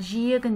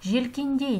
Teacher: жиегін деген сөзде и дыбысы дауысты, желкендей деген сөзде и дыбысы дауыссыз